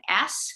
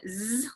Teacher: we make it voiceless minus voiced we get an s so s is now the same sound as z except it's just the voiceless version of that